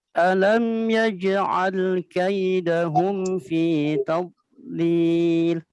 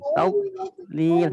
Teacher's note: Setiap dod sukun itu tidak boleh dipantulkan. Kenapa? Karena dod bukan huruf qalqalah. Jadi bacanya ditahan.